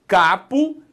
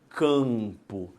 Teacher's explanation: Aí parte do A, capo, o ar sai inteirinho pela boca. Quando eu falo campo, parte do A vai para o nariz. Por quê? Porque a sua língua sobe um cadinho e empurra esse A para o céu da boca, fazendo uma nasalização.